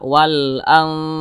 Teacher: Nah, jadi cara bacanya itu disamarkan kemudian juga didengungkan. Karena dia ausat, jadi antara samar dan dengungnya itu dia seimbang. Nah, jadi dibaca wal ang, jangan wal ang ketebalan. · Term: ikhfa